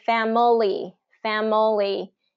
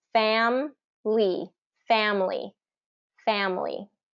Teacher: typically for native speakers they reduce it to the two two syllables